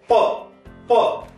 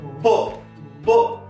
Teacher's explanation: When we speak voiceless, just as we speak P, P, there is no vibration in our vocal cords. But when we speak B, first of all, there will be vibration like that, and then we'll pronounce the sound.